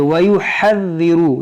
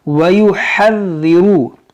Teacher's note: देखिए वयुहज़्ज़िरु, ये ज़ाल मुशद्दद है, इसको पढ़ेंगे 2 बार